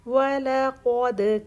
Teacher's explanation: قاف کی زبر کلیئر کریں گے اور قاف کو ہیوی کریں گے اور پھر دال کا کلکلا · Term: دال کلکلا